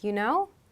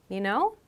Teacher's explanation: So you can think of you know used in that way with that upward intonation to be looking for like confirmation. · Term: upward question intonation